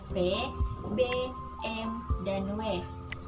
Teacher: bunyi bilabial yaitu bunyi yang dihasilkan oleh keterlibatan bibir bawah dan bibir atas caranya bibir bawah sebagai artikulator menyentuh bibir atas sebagai titik artikulasi